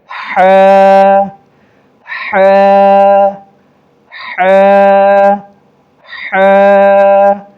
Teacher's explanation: آگے دیکھیں ح، اس لفظ کو ہ نہیں پڑھیں گے، ہ نہیں پڑھیں گے بلکہ ح ح، جیسا کہ گلا صاف کرتے وقت آواز جہاں سے نکالتے ہیں وہاں سے اس کو نکالیں گے ح ح ح ح، ایک الف کے بقدر کھینچیں گے ح۔